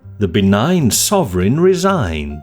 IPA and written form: ðə bə.ˈnaɪn ˈsɒ.vrɪn rɪ.ˈzaɪnd (The benign sovereign resigned)